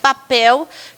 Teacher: Em vez de falar papel, que o P precisa de um pouquinho mais de força, eu troco e falo babel.